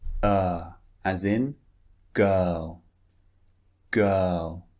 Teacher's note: The first one uh the mouth is quite relaxed. It's not far open. It's not wide. It's not rounded. It's relaxed.